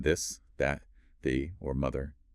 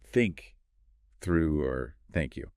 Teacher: The subtle but crucial difference involves placing your tongue gently between your teeth. For the voiced vu, you're vibrating your vocal cords.